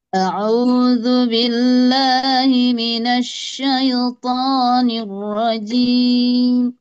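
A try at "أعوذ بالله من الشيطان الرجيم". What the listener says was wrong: Nah, alhamdulillah ya.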